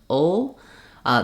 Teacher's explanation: Some dictionaries will show it with a small schwa before the L, because to make that dark L, we have kind of a dark schwa sound before it. So it sounds like ol, The way I make that is I keep the back of my tongue in the schwa position and I lift the front of the tongue.